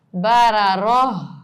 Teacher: गोलता को वक्फ में हम हा से बदल देते हैं